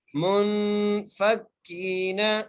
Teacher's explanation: آگے منفکین، میم کو نون سے ملاتے ہوئے غنہ کیا اور نون پہ غنہ اس لیے کر رہے ہیں کیونکہ نون ساکن کے بعد حرف حلقی میں سے کوئی حرف نہیں ہے، اگر کوئی حرف ہوتا تو ہم نون پہ غنہ نہ کرتے۔ منفکین، فا کو کاف سے مضبوطی سے ملانا ہے اور کاف کو ایک الف کی مقدار کھینچ کے پڑھنا ہے